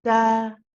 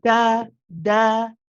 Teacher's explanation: on the gums just behind the upper two front teeth that's where the tip of the tongue is pressing